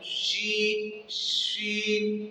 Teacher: یعنی مقصد کیسے پائی جاتی ہے کہ شین کو ادا کرتے وقت منہ میں آواز پھیل جاتی ہے، شین منہ میں آواز پھیلتی ہے، اس وجہ سے اس میں تفشی کی صرف ادا ہوتی ہے۔